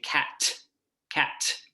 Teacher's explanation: So I might say cat, where I just stop what I'm saying, cat, or I could really have a burst with that T and hyperarticulate that T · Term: release of the t, T release